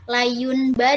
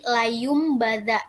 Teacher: contohnya itu Layung badan nah Layung itu kan nun mati ya Nun mati bertemu dengan mbak jadi dia dibacanya Bukan layun tapi layumbada itu diganti dengan mim · Jadi dia dibacanya bukan layun bada, tetapi layum bada. Nah, ba nun itu diganti dengan mim, jadi layum bada gitu. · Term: iklab